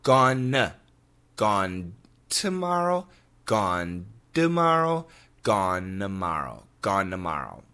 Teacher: That N in gone can cancel the T in tomorrow, so we could have gone tomorrow. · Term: cancellation